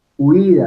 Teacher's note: la u es cerrada y la i es cerrada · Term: yato